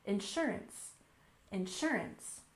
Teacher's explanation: And finally, in this group, we have insurance. We stress the second syllable, insurance, insurance.